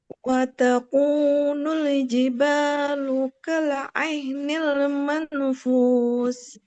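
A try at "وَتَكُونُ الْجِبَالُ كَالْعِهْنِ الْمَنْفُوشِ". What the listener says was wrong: Man, samar, tahan 3. Manfus. Tapi ditahan 3 ketuk. Manfush. Jelaskan shinnya. Mang ditahan. Mang masih terus sebentar ditahan. Manfush. Lagi lebih lama coba. Manfush. Ya, jelaskan shin. Fush. Fush.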